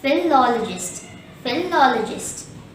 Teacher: The stress is on the second syllable lol, and there are 2 schwas in this word.